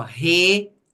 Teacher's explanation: eu não pronunciei o e e o u numa única abertura de boca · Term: iato